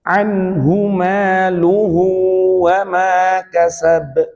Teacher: Nah, kasab ini qalqalah kubra dipantulkan.